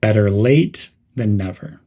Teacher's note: The T's are pronounced as D's, better. And there's a slight emphasis on the word late. · There's a short pause after late · Keep the word than neutral and connected quickly to the word never.